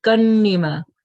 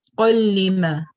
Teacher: So kalima, we don't have that tanween sound, the noon sound that comes, because we have the next letter is lam here, and this letter when it comes we join them, we merge them together without that gunna sound